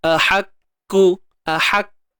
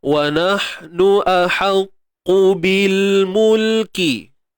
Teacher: Huruf qaf tebal selamanya. Okey? Pangkal lidah kena naik.